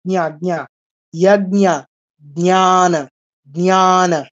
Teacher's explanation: বর্গীয় জ দিয়ে শুরু, ইয় দিয়ে শেষ বলেছিলাম